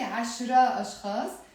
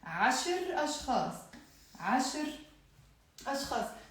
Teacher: So I cannot say عشرة أشخاص because I'm dropping the A sound with the ت مربوطة and it becomes عشر أشخاص.